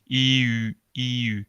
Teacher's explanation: Progresivamente cambias el i en u y hace que produces el sonido u.